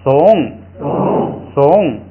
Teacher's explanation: 这个是高平调，碰到在后加字撒要降下来